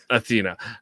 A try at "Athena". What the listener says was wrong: Don't forget the A. It's not Athena.